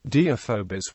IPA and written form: diːˈɪfəbəs (Deiphobus)